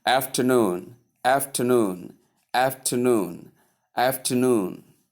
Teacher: Stress on the last syllable. That is the third syllable. So you must say the full three syllables. · The 3 syllables must be pronounced clearly, none omitted. Although the middle syllable is softened, that is how you pronounce the word afternoon.